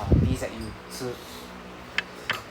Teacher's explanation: So, instead of a TZ U, it's a DZ U. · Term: DZ U sound